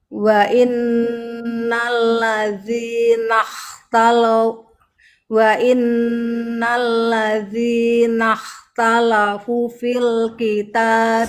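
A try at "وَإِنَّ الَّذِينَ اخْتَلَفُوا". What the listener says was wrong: Punya panjang. Wa innal ladzina ikhtalafu, 2 harakat.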